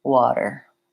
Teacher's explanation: What I like to think about it as kind of a light D sound. So I'm not saying water with a strong D, but I am voicing that T, and it sounds more like water. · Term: flap T